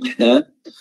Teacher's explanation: wasaqul halqnya dikecilin dan menimbulkan efek suara yang nyaring